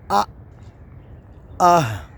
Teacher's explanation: یعنی ہمارے گلے کا وہ حصہ جو سینے کے قریب ہے وہاں سے ادا ہو رہے ہیں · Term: اقصی حلق